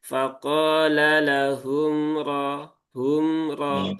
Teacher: Jadi faqala lahum ra hum ra ya, bukan hum ra. Humnya nggak perlu ditekan dan jangan dijeda. Kalau dijeda nanti seperti saktah ya. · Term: tawasud